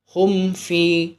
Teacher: میم ساکن ہے اور میم ساکن کے بعد والا حرف فا ہے، تو یہاں پر ہمیں بالکل غنہ نہیں کرنا ہے۔ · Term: اظہار شفوی